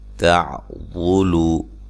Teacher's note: عین کو واضح نکالنا، واد کو موٹا ادا کرنا